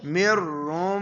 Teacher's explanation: اب ادھر کیا کریں گے؟ نون کو را میں ملا دیں گے، یعنی نون را بنا کے پڑھیں گے